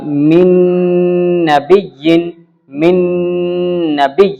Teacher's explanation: من نبی یہ ہے ادغام مع الغنہ، یعنی غنہ ہوگا